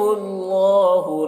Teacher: اللہ کلام کو پر پڑھیں گے، اللہ کلام سے پہلے پیش ہے